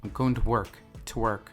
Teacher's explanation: when you're using it before places, you reduce the to a t sound